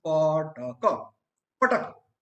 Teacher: keep in mind 3 aspirated sounds